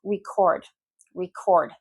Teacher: If I'm stressing the second syllable, that's a verb, usually in English.